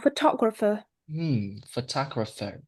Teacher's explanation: So the stress is on the second syllable. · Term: stress pattern